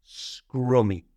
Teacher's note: And to say this word correctly, we do pronounce the R. However, we don't use our tongue to pronounce the R sound. It's not scrummy.